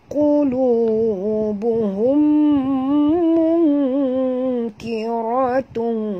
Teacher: nun mati bertemu kaf, sorok dan dengung. Ikhfa hakiki.